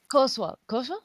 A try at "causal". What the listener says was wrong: no Co not causual there's no a at the end causal